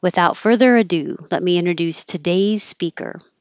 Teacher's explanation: i went up on introduce